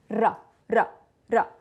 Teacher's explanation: we pronounce it with the tip of the tongue going against the top of our mouth